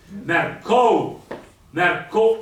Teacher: la U la pronuncio appena, è una leccata, mentre invece la O è sostanziosa e lo sta a dimostrare anche il fatto che c'è un accento grave. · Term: ditongo